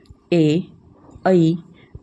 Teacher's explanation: बच्चे आप इनको खुद से बोल के देखिएगा, आपकी जीभ का जो आगे वाला हिस्सा है वो उपयोग में आ रहा होगा। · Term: अग्र स्वर